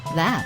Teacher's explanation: Breathe out steadily, forcing air to flow between your tongue and teeth. You should feel a slight vibration on your tongue and hear a soft friction sound. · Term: voice th sound